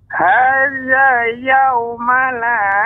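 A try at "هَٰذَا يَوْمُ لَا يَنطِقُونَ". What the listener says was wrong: Yaumu. Harokatnya dhammah, Nek. Perhatikan.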